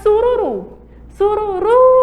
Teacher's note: a sílaba tônica é a última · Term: palavra oxítona